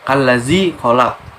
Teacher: alif lam nya tidak usah dibaca atau seperti tidak ada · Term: alif lam syamsiah